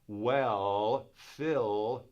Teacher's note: So when I say things like, well, Phil, the tip of the tongue goes up and touches that gum ridge. But if I got my mouth like this, it's going to be a lot easier to say well and Phil and things like that.